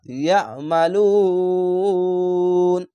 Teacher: ইয়া, আইনটিকে মোটা করে গলা চিপে ইয়া মালুন, এখানে লু না আছে, এখানে আয়াত আছে, থামতে হবে, তার জন্য শেষ অক্ষরে সাকিন দিবেন এবং পেশের পাশে অসাকিন এক আলিফ টেনে পড়তে হয়। শেষ অক্ষরে সাকিন দিলে 1 2 3 তিনটি অক্ষর তিন আলিফ টেনে পড়বেন, মধ্যে আরজি হবে।